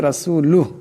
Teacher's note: এখানে রাকে মোটা আওয়াজে পড়তে হবে এখানে সাকিন হয়ে যাবে রাসুলুহ এমন একটা উচ্চারণ হবে আশহাদু আল্লা